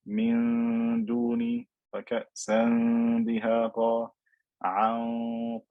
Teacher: i am pronouncing the noon without touching my tongue the tip of my tongue to the top of my mouth